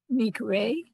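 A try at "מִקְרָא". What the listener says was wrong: Mik ra a. You have to hear that ra.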